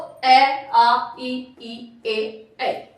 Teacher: अवृत्त मुखी जिसमें हमारे होठ गोलाकार नहीं हो रहे